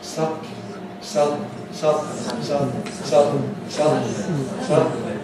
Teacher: My tongue is not moving, my soft palate moves. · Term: nasal release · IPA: [ˈsʌdn̩li]